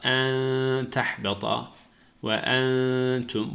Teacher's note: burada da ihfa var. Ses bir elif miktarı kadar genizden akacak.